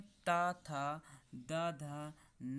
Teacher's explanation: जिनका उच्चारण ऊपर के दांतों पर जीभ लगाने से होता है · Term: दंत वर्ण